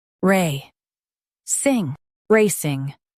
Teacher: Stress ray and keep sing quick.